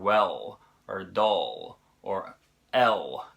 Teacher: this sound is pronounced with the tongue further back in the mouth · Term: the dark L